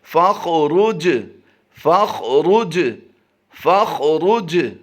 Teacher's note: जीम पर जज़म है, जीम हरूफ़े कलकला से है इसलिए इस पर कलकला करके पढ़ेंगे।